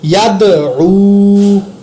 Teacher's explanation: یا زبر دال ید، عین پیش واو عو، ید عو، دال پر قلقلہ اور آگے واو کو واو مدہ ایک الف کے برابر لمبا کر کے پڑھا۔